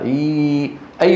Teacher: هذه الثلاثه رخوه والحرف الرخو قابل للمط